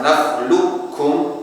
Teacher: Yang pertama dengan kamil, idghamnya secara sempurna langsung ke kaf